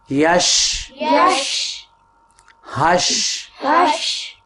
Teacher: شین میں آواز پھیلتی ہے شین کی ادائیگی میں